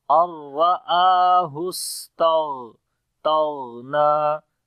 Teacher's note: اور را کو موٹا پڑھیں گے، را کے اوپر زبر ہے، آ کو لمبا کریں گے، اس کے اوپر کھڑی زبر ہے. سین کے اندر جو ہے صفت حمز ہوگی، صفت صفیر بھی ہے، سیٹی کی بھی آواز آئے گی. غین کو موٹا پڑھیں گے اور غین کے اندر صفت رخاوت بھی ہے، آواز جاری ہوگی تو آواز آئے گی الرآہ استغنی.